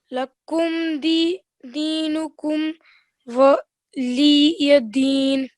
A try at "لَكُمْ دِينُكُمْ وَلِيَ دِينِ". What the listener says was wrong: Waliyadeen. Excellent.